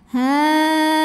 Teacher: atas makhraj dari huruf ta tapi belum nyentuh masih ada jarak dengungnya sedikit ya aliran suara yang masuk hidung sedikit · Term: ikhfa aqrb